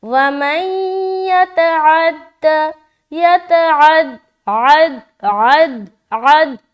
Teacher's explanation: عین نکال رہے حلق سے، کیونکہ عین حروف حلقی میں سے ایک ہے تو اس کا نکالنا حلق سے ضروری ہے